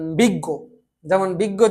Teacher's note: শেষের অটাকে কিন্তু আর জোর দেওয়া হয় না। এই হসন্তটা দেওয়া হয় ওই শব্দটাকেই জোর দেওয়ার জন্য।